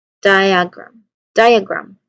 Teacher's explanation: The main emphasis here in the word diagram, it should be on the first syllable.